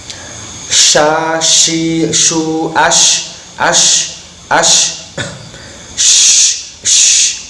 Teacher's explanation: Makhrajnya shin adalah di antara tengah lidah dan tengah langit-langit. Nafas harus banyak yang keluar dan bibir melebar, tidak moncong atau mencucu.